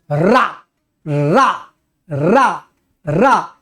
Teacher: अकेले यही वर्ण है जो कपा देता है बोलने में। जबान कांपेगी, बोलो और कौन अक्षर से बोलो रा ही जबान को कपाएगा, और कोई कपा ही नहीं सकता। · एक तो लुंठित, लुढ़काया हुआ, हवा जबान पर ऐसे लुढ़कती हुई चलती है, इसलिए इसको बोलते हैं लुंठित ध्वनि। तो यह अकेले लुंठित ध्वनि है रा। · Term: प्रकंपी ध्वनि